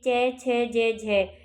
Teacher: ये तालव्य है, और तालव्य के साथ साथ में ये स्पर्श संघर्षी भी है।